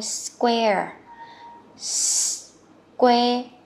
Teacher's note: mình thêm một cái âm ờ nữa nha. Ờ thật là nhẹ thôi.